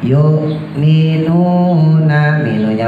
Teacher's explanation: yuknya tekan tapi jangan terlalu nanti jadi ain. Yuk biasa aja.